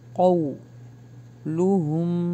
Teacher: قو حرف لین ہے، جلدی پڑھیں گے اور ہونٹوں کو گول کریں گے. قو اور ہیوی ہے، قاف جو ہے وہ ہیوی ہے.